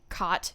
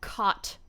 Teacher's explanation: I say them the exact same way, which is not typical of where I'm from.